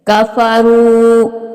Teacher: یہ واو مدہ ہے، اس کو بھی تھوڑا کھینچ کے پڑا جائے گا